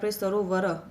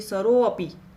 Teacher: રો ઉપર આપણે કેટલું વજન દઈએ છીએ, ભાર આપીએ છીએ. એ રીતે બે શબ્દોનું ઉચ્ચારણ કરીને જુઓ.